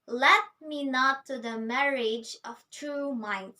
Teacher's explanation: rather than having the dum rhythm, we've got a stress on the very first syllable. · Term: trochaic substitution